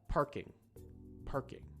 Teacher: when you're speaking very natural English, the G sound actually almost disappears. You almost can't even hear it, and you sort of have to be very, very fluent in English to really know that it's there, right?